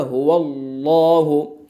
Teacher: मुँह भर के पढ़ेंगे तो पुर हो जाएगा